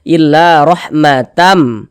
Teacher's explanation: jadi bunyi tanwidnya dimasukkan ke huruf mim melebur ke huruf mim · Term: idgham bihunnah